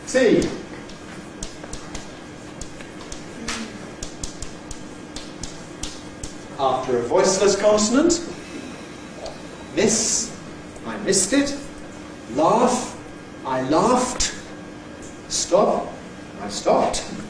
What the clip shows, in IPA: mɪst